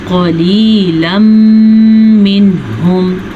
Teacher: نون ساکن یا تنوین کے بعد یہ مون میں سے میم آیا ہوا ہے تو ہم ان دونوں الفاظ کو آپس میں غنّے کے ساتھ ملا کے پڑھیں گے. اسے کہتے ہیں ادغام بالغنّہ.